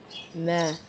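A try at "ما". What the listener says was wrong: Elongate it. So in Alif Mudda we elongate Alif, we stretch Alif. And this in second short vowel, long vowel, vowel madha, we will elongate vowel. We will read it double.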